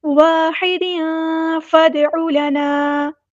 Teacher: دال کی دو زیر تنوین ہے، اس کی آواز کو چھپا دینا ہے، اخفا ہوگا